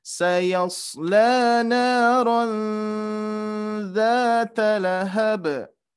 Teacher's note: ada tanwin bertemu huruf dzal. Berarti termasuk huruf ikhfa ya, yang harus kita tahan dulu